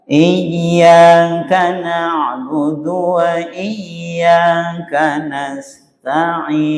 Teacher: Huruf terakhir dibaca dengan suara pelan atau bahasa yang lain dengan suara yang lirih hampir tidak terdengar. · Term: arraum